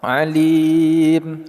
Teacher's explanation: kita panjangkan dulu du sampai dengan 6 harakat baru kita sukunkan huruf mim di akhirnya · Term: Mad Arid Lis sukun